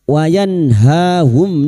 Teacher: nun sukun bertemu ha idhar halq nun sukun dibaca jelas tanpa mendengung